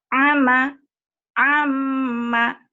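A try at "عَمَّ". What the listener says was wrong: ainnya belum kurang. Ama, ain coba. Iya, ainnya nanti dilatih ya.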